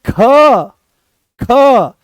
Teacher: ख जो होता है वो महाप्राण होता है